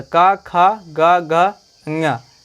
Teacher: ये पांचों वर्ण कंठ से बोले जाते हैं, यानी कि कंठ का तात्पर्य है गले से